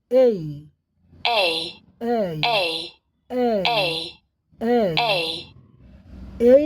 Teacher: ए से ई की तरफ ध्वनि गई है। पहले ए फिर जो है इ ए ठीक है?